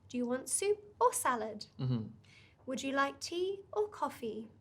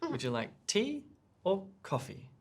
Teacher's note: the first part of the sentence we rise we take up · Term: either or questions